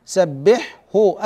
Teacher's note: اظهر الحاء قبل الهاء والحاء والهاء حرفان حلقيان يخرجان من الحلق والهاء اعمق من من الحاء فلا يدغم حرف حلقي فيما هو